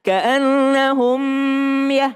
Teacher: Mim sukun ketemu dengan ya. Enggak berdengung, jangan ditahan.